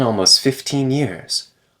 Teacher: The T disappears between S and F.